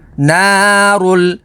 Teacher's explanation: را کے اوپر پیش ہے تو را کو پر یعنی موٹا پڑھیں گے، اور اس میں جلالت اللہ عز و جل کے لام سے پہلے پیش ہے تو اس میں جلالت اللہ عز و جل کے لام کو پر یعنی موٹا پڑھیں گے، اور لام کے اوپر تشدید ہے تو تشدید والے حرف کو 2 دفعہ پڑھیں گے۔